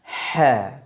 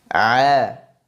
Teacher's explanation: ke arah dinding belakang tenggorokan akan tetapi tidak serapat huruf Ain Jadi kalau dibandingkan celah huruf ha lebih luas daripada huruf Ain Maka nanti suara yang dihasilkan huruf Ain pengucapannya lebih berat daripada